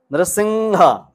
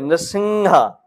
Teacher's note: अनुस्वार है वोह सिर्फ नासिका से ही बोला जाता है